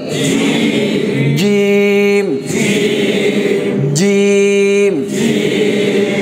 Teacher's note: জিম, জিব্বার মধ্যখান উপরের তালুর সাথে লাগিয়ে বলতে হবে। মনে করেন এটা হচ্ছে জিব্বা, কেমন, এই মধ্যখানটাকে এইভাবে তালুতে লাগিয়ে চাপ দিয়ে ছেড়ে দিবেন।